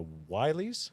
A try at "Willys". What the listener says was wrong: Willis. It's spelled with a Y, but it's still pronounced Willis.